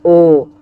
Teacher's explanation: ओ तो होठ गोल हो जाएगा और कंठ से आवाज आता है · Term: कंठ होष, कंठोष्ठ